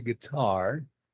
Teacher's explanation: don't forget that the stress is on the second syllable. You say guitar.